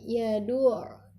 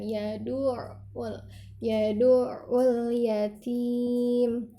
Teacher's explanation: ketika dia ain dan dia bertasydid harus dimasukkan dan ditekan. Yadu'ul, jangan dihentak tapi dialirkan.